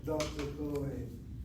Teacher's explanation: when it comes to the name of Cohen, you have the accent of that first syllable